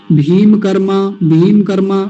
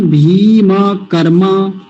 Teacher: देखिए बड़ी सावधानी से दो बातें हैं केवल इसी शब्द में। पहली तो दीर्घ ईकार, बड़ी की मात्रा, और मकार पूरा रखना है, भीम नहीं, भीम।